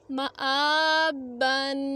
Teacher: تو میم زبر الف نہیں پڑھیں گے بلکہ میم زبر ما، خالی علیحدہ میم زبر ما پڑھیں گے اور حمزہ کھڑی زبر آ، حمزہ کھڑی زبر آ اور ایک الف کی مقدار تک لمبا کریں گے کیونکہ کھڑی زبر ہے